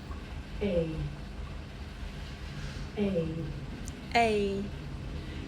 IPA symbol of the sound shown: eɪ